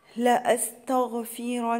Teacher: هنا النون مشددة غنة مقدار حركتين